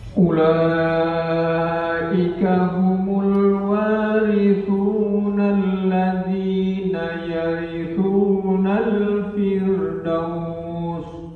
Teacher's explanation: ada satu mad wajib muttasil di ayat yang ke-10. Ulaika ini panjang sekali itu.